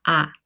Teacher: For A, open your mouth wide and say A. This vowel has the biggest mouth shape in Korean vowel